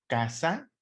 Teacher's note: la sílaba tónica recae en la penúltima sílaba. La última es sa, la penúltima es ka, ¿sale? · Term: palabras graves